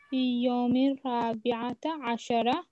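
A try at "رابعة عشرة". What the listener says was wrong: Rabi'a, nota, only a.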